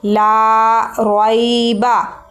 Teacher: لا یہاں لام کے ساتھ الف ہے, یہ مدہ ہے, حرف مدہ ہے, تو لام کو ہم ایک الف کے برابر لمبا کریں گے.